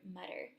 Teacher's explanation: we have a glottal stop in the middle of the word butter